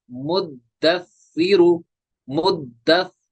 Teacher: دال کو بھی دو بار پڑھنا ہے، سا کو بھی دو بار پڑھنا ہے